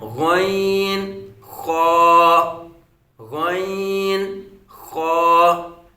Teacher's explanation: یہ حلق کے اوپر والے حصے سے ادا ہوتے ہیں۔